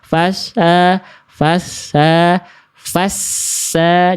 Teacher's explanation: jadi di sini dia sinnya bertasydid. Maka desis desisannya jelaskan ya desisannya. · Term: sofir